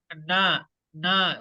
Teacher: suara yang mengalir melalui rongga hidung saat huruf mim dan Nun diucapkan